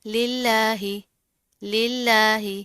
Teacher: للہ للہ اس کو آپ نے للہ اس طرح نہیں پڑھنا، موٹا نہیں کرنا، کیونکہ لفظ اس میں جلالہ یعنی اللہ کے نام سے پہلے زیر آ رہی ہے تو ہم اس کو باریک پڑھیں گے